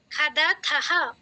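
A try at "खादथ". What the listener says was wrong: খাদাথা এই থায়ের উচ্চারণটা জোরে করবেন। ইউয়াম আন্নাম খাদাথা।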